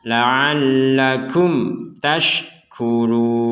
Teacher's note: Jika di sini mim sukun bertemu dengan ta, maka kita membacanya dengan jelas.